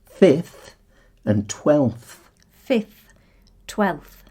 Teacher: And so on, adding TH apart from fifth and 12th. And they can be a bit of a headache when it comes to pronunciation because you've got a F sound followed by a Th sound